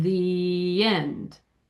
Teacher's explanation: Because what I mean by the Y glide, do you understand what I mean by that? So you say the, and then you put a little y sound before you go to end